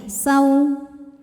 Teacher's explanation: Ada huruf lin, sebab ada waw sukun yang sebelumnya berbaris fathah. Cara membacanya cukup kita lembutkan saja. Saw, S-A-W ya, saw.